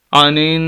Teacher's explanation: نون مشدد ہے، یہاں پر غنہ کریں گے، ناک میں آواز جائے گی